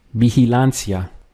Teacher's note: Notice here how the V, the combination of VI, is pronounced as like a B in Spanish. So it's B at the beginning of the word.